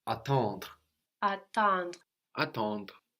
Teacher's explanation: We have the en in the middle that gives us a nasal sound, and then the re on the end, which kind of gets swallowed into the d.